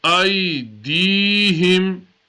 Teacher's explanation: So this ya is called a ya madda. So we stretch the dal because of the ya madda slightly